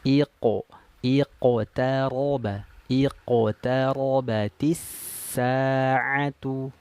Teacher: karena qaf ini huruf tebal, maka vokalnya dia O